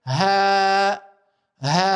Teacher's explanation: e zgjasim sepse kemi elifin si shkronjë medit